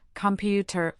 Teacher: Computer has stress on the second syllable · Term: syllable stress